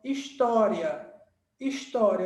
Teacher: História, eu estou no I e vou subir para um som mais forte, tá? Então, cheguei primeiro no I e subi para o A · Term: ditongo crescente